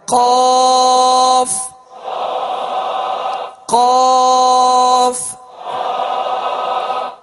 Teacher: زبان کی جڑ اور تالو کے نرم حصے سے دو نقطے والا قاف جو پر پڑھا جاتا ہے وہ ادا ہوتا ہے